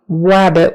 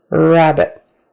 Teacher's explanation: your tongue is going back and up and it's kind of tight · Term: initial R